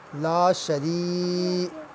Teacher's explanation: یا ساکن ہے، یا سے پہلے جو ہے وہ زیر ہے، سے یا مدہ کہتے ہیں، لہٰذا اسے بھی 1 الف کی مقدار لمبا کریں گے۔